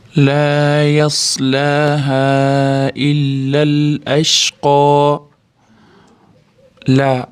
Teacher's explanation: Laa alif lam birga kelgani uchun cho'ziladi. Yas sotib chiqaramiz sukunini.